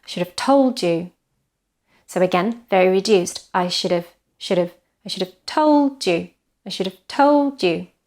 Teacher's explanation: So the only stress is on told.